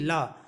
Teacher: मुंह के दोनों तरफ से, जहाँ से मुंह आपका जो फटता है वहाँ से दोनों तरफ से हवा निकलेगी, इसे कहते हैं पार्श्विक व्यंजन ला।